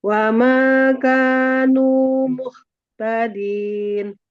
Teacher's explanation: muhtadin huruf H-nya dia dialirkan suaranya jangan sampai ada jeda